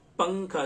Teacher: نون کی آواز کو ناک میں چھپا کر پڑھیں گے ، جیسے اردو میں پنکھا کے نون کو پڑھتے ہیں، جب · پڑھیں گے، جیسے اردو میں پنکھا کے نون کو پڑھتے ہیں، جب ہم پنکھا بولتے ہیں تو تھوڑی سی نون کی آواز ہماری ناک میں جاتی ہے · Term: اخفا